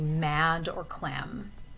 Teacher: M is another bilabial sound because again, you're putting your lips together to make the sound.